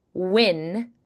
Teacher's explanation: Another mistake is dropping the W. Some learners, especially speakers of Japanese or French origin, may replace the W with just a vowel.